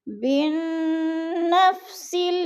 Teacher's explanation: بن با کو نون کے ساتھ جوڑ کر پڑھنا ہے، غنہ کرنا ہے